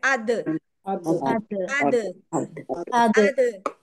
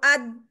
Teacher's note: अद अ अगर मैं कहूं अद वहां पे लग गया जाके अद कुछ भी नहीं हो रहा मेरी कोई आवाज नहीं सुनाई देगी दाल कलकला लेटर है इसके ऊपर आवाज बाउंस होती है